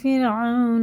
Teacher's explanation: یہ واو ساکن سے پہلے زبر ہے تو یہ حرف لین ہے، اس کو جلدی پڑھیں گے بنا کھینچے